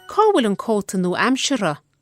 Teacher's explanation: showing the lenited F, the one that's weakened to non-existent